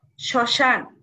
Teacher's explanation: স এর সঙ্গে ম উচ্চারণ হবে না · ফলা থাকলে সে ম ফলা উচ্চারিত হয় না উচ্চারিত হবে না শব্দের প্রথমে যদি ম ফলা থাকে তাহলে ম ফলা আমরা উচ্চারণ করবো না